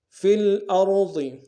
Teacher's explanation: را کو موٹا ادا کریں گے، ضاد کو موٹا ادا کریں گے۔